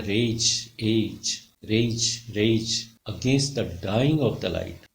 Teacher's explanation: पहले दो शब्दों में रेज रेज में ए साउंड, ए डिप्थोंग डोमिनेट करता है, और सेकंड में आई डाई डाइंग और लाइट में आई साउंड डोमिनेट कर रही है।